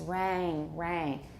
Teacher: going towards a but it's lower it's basically a with raising make it long and the tongue has to be lower